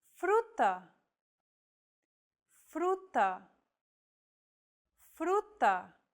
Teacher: this Trill sound is done by lightly tapping the gum Ridge behind your upper teeth with the tip of your tongue it should be a quick striking motion similar to The Sensation